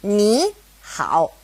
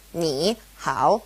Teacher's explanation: tone and a third tone next to each other knee how it changes to a second tone and a third tone